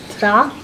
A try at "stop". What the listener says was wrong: Not stop. I heard p at the end. Do I see a p? No. What sounds do I hear? St. Let's do it together. St.